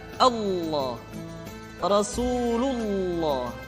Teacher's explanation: lam yang terdapat pada lafzul jalalah tersebut mesti ditebalkan Allah Rasulullah kecuali kalau lafaz Allah didahului oleh huruf yang berharakat